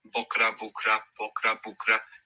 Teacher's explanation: You might hear more like an O, or you might hear more like an U.